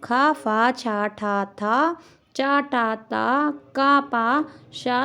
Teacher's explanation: खर प्रत्याहार के अंतर्गत आने वाले जो वर्ण होते हैं, वो वाह्य प्रयत्न जो होता है वो विवार, श्वास और अघोष होता है